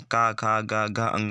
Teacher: जैसे कंठ में कौन कौन होते हैं, का, खा, गा, घ, अंग, ये सारे कंठ से उच्चारित शब्द हैं